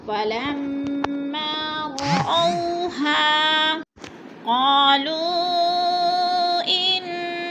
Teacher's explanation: رأو پہ بولین ہے، جھٹکا بھی نہیں دینا اور لمبا بھی نہیں کرنا. ہا کو تھوڑا سامنے کھینچنا ہے.